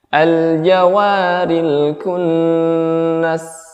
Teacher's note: kaf itu ada unsur udara juga setiap kali diucapkan